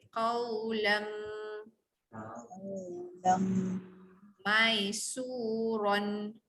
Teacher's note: masuk bunyi mim, panjangkan dengung, itu hukum idgham yang belakang tu idgham.